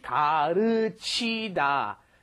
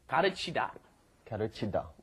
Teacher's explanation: the L is right in between the R and L in English. It's more like a D almost.